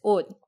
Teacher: In that scenario, you're looking at an unvoiced sound, in this case, an unvoiced sound that's not a K or a P, at the end of a word. And so you would pronounce that word as 옷 with an unreleased T. But we're not actually at the end of a word, not technically, and so that doesn't happen.